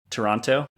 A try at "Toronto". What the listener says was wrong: Toronto. Okay, so that's how we can tell if you're a tourist, is by pronouncing the second T. So it's actually... So Toronto. At least that's what we say it if we're from Toronto.